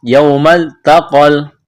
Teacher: ہے، واو لین ہے، اس کو کھینچنا نہیں ہے، یوم التقل، تا کو باریک، قاف کو موٹا ، تقل جمعانی، کڑا زبر ہے، فبإذن اللہ، ذال کو نرم